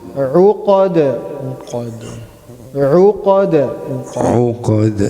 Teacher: we have to make sure the ayn is being pronounced from the middle of the throat.